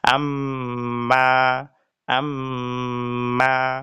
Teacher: আর মিমের ক্ষেত্রে গুন্না করিতে হবে ইখফার সহিত। ইখফা মানে দুই ঠোঁট বন্ধ করে নাকের বাসি থেকে গুনগুনিয়ে পড়া বা গুন্না করে পড়া